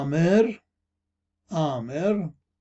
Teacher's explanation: الملاحظة الثانية هي حول حرف العين، الذي هو مشكلة قليلا في اللغة الآشورية المعاصرة، لأن حرف العين يلفظ كهمزة مضخمة يخرج من مؤخرة الفم وليس من الحنجرة كما في العربية. فعلى سبيل المثال كلمة آمر، عامر، لا نقول عامر إنما آمر، آمر، وتعني يسكن، يسكن، نقول كما لفظتها تلفظ آمر مع تضخيم الهمزة طبعا، آمر.